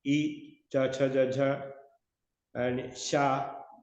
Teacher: I, cha, cha, ja, ja, and sha, they are coming from talu, that is palate, but front palate.